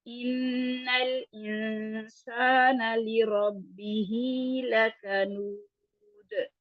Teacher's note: لکنود دال جب ساکن کریں گے تو اس پہ قلقلہ کریں گے